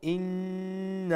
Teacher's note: nun mushaddad wajib gunna akmal gunna, then you have to stretch the na to maddal munfasil 3 alif long